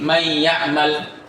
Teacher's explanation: Maka nun dihilangkan, dileburkan dan dimasukkan kepada huruf setelahnya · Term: idgham